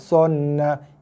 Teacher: Tekan pada nun. Dengung dan lepas. Sonna. Ini dengung.